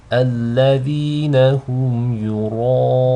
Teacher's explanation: So you don't want the hamza to be read with tafkhim, nor do you want the ya to be read with tafkhim, just the ra.